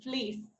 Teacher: at the high front most position at the extreme point is e that occurs in the word fleece